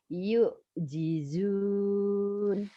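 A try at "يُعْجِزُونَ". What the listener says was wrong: Kurang neken.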